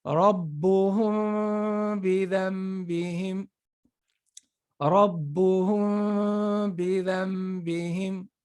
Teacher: The ghunna has to be prolonged. · when you're getting your lips close to each other, but not totally close, you're still having 90% of the sound coming out of your nose, right? So, but there's tiny bit coming out of your mouth and with that vibration sound. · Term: ikhfa